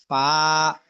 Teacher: আচ্ছা, 14 নম্বর মাখরাজ নিচের ঠোঁটের পেট সামনের উপরের দুই দাঁতের আগার সঙ্গে লাগাইয়া ফা, ওই যে আমরা ফুল ফল লিখতে যে ফ যেভাবে বলি, হ্যাঁ, তাহলে হলো 14 নম্বর মাখরাজে নিচের ঠোঁটের পেট সামনের উপরের দুই দাঁতের আগার সঙ্গে লাগাইয়া ফা।